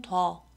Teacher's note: 원래 있었던 단모음 우만 반모음 오우로 교체됐다는 것을 확인할 수 있습니다. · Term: 반모음화